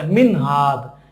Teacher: নুন সাকিন তানবিনকে গুণনা না করে স্পষ্ট করে পড়তে হয় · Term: ইজহার